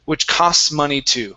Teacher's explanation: So, we have uh a T that's sort of in the middle of uh two consonants here. We're going to skip over that T and we want to move the word into the next one very quickly.